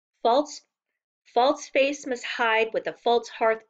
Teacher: a line of ten syllables that has a rhythm like a heartbeat the first syllable / beat is unstressed and the second is stressed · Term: iambic pentameter, unrhymed iambic pentameter